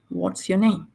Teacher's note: it just glides down doesn't go up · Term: falling tone